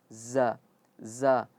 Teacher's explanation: Fa innama ee perlu diperhatikan ketika za zajratun zajratun za itu dia ee ujung lidah tetapi mengenai ee gigi gigi seri atas dan dan bawah. Za za sama seperti sa za tetapi kalau za getarannya sedikit. · Sama seperti sa. Tetapi kalau za ada getarannya sedikit.